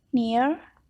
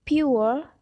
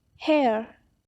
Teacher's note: with a glide from a front or back position toward a more central position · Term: centering diphthong